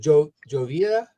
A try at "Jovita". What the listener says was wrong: Jovita. Jovita. The J is pronounced like an H.